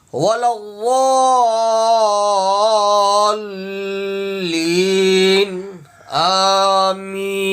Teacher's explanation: اب یہ ضاد کے اوپر بھی تشدید ہے، لام کے اوپر بھی تشدید ہے، اکثر خواتین حضرات غلط پڑھتے ہیں، ولضالین، وا الگ پڑھتے ہیں، لین الگ پڑھتے ہیں، ان کو ملانا ہے